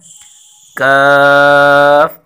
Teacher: क़ाफ़ काफ काफ کاف، کاف حرف باریک ہے اور اس کی مخرج ہے قاف کی مخرج سے ذرا نیچے منہ کی جانب، یعنی زبان کی جڑ کے قریب سے اس کے مقابل پر جو سخت تالو ہے اس سے لگے تو وہاں حرف کاف نکلتا ہے